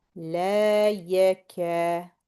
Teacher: Ka is the same exact length as la.